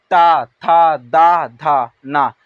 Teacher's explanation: ता वर्ग में जब हम बोलते हैं तो हमारा जीभ जो होता है यह हमारे दांत से टकराता है, यानी कि टच होता है।